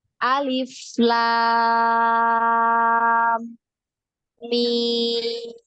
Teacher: Kemarin cara bacanya ya untuk ayat-ayat surah huruf muqatta'ah bagaimana? Nah, alif la-nya dibaca panjang dulu 6 harokat baru didengungkan ke huruf mim